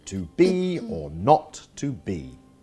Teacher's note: the first syllable is unstressed and the second is stressed